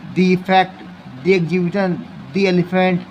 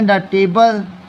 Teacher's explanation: अगर vowel sound आएगा तो डी पढ़ेंगे